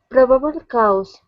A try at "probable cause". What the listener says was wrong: Right now you're saying cow. Instead of cow, it's cause. Okay, almost. Leave your mouth open. Okay, it's only one vowel sound. So the A and the U only create one sound. We don't want to say ow. It's only ah. Cause.